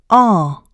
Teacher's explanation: duration just like this oh when you produce the correct ah you can feel vibration in two places these are in the vocal cords and at the body of your tongue in the back of your mouth